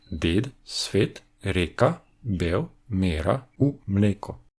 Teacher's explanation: En slovène, les jaťs se sont transformés en des e fermés.